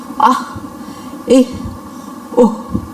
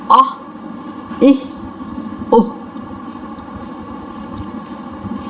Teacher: جب ہم نے ان کو ادا کیا تو ان کی ادائیگی کے وقت ہماری آواز حلق سے ٹکراتے ہوئے، سٹریس کھاتے ہوئے پھر ادا ہوئی. یہی ان لیٹر کی پہچان ہے کہ جب بھی ہم نے ان آواز پیدا کرنی ہے تو وہ ہماری حلق سے ٹکراتے ہوئے پیدا ہوگی، جس سے جی آگے چلتے ہیں.